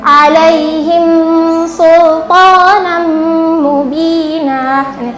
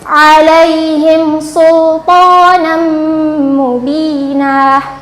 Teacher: kita membunyikan suara mim sukun itu dengan jelas tanpa disertai dengan dengung. Jadi tidak sama dengan idgham mimi dan ikhfa syafawi ya. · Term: idhar syafawi